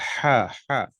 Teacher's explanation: جیسے بڑی ہا ہے ہا، ٹھیک ہے، اور ایک چھوٹی ہا ہے ہا، جبکہ دونوں ایک جیسے ہیں لیکن نہیں، ان کے مخارج الگ ہیں. جو نکلنے کی جگہ ہے ہا، وہ گلے کے جو نیچے کا حصہ ہوتا ہے وہاں سے وہ نکلتا ہے